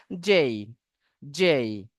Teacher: জের উচ্চারণ শেষের ইটা একটু হালকা হবে।